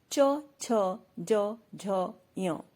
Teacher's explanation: च, छ, ज, झ, य तालव्य कहे गए हैं क्योंकि इनके उच्चारण के समय जीभ तालू से लगती है।